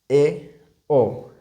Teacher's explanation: अर्ध संवृत जिसमें मुख कम खुलता है